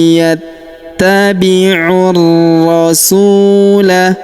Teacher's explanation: huruf ta kita tahan dan tekan karena terdapat tanda tasdid di atasnya